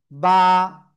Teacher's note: তারপরে শিখেছি বা, দুই ঠোঁটের ভিজা অংশ থেকে এক আলিফ টানিয়ে উচ্চারণ করব